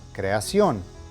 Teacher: note that the stress is at the end of the word since that is where the accent is located clear muy bien